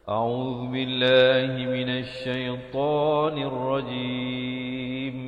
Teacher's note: A'u, Zu di hujung lidah. Billah, lafzu jalalah dibaca nipis